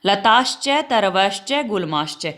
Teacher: ये सलगम वाला श, जिसको आप तालव्य शकार बोलेंगे। तालव्य क्यों, क्योंकि जब इसको बोलते हैं तो जीभ तालु पे लगती है